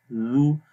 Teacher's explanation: اس کے بعد ہے زال، زال کو نرم پڑھتے ہیں، زو، زبان کی نوک کو اوپر والے دانتوں کے کناروں پر لگاتے ہیں تو زال کی آواز پڑھی جاتی ہے